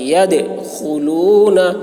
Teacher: ناس يدخلون، دال میں قلقلہ آواز ٹکرائے گی. يدخلون، خا موٹی ہوگی، حلق سے ادا کریں گے